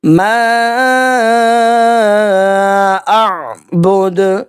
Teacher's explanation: اعبد، دال کے اوپر پیش ہے، عارضی جزم آ جائے گا وقف کرنے کی صورت میں، تو یہاں پہ قلقلہ کیا جائے گا